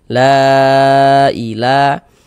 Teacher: mad thobi'i yang bertemu dengan huruf hamzah di lain kata dalam dua kata yang berbeda, maka menjadi mad jaiz munfasil panjangnya 4 sampai dengan 5 harakat. La ila kemudian la dibaca panjang. · mad jaiz munfasil, panjangnya 4 sampai dengan 5 harokat